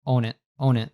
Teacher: the N links on to the it